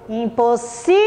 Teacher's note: Então, o si demorou mais para ser pronunciado. Ela é a sílaba tônica.